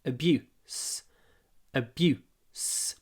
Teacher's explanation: When you pronounce this word abuse, make sure that the oo is really short. It's clipped before the unvoiced s at the end.